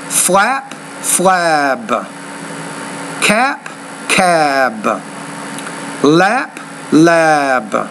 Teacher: when the p is at the end of the word the vowel is shorter when the B is at the end the vowel is longer